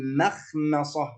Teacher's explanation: لابد أن نرقق حرف الميم لأنه جاء بعده حرف استعلاء، حرف تفخيم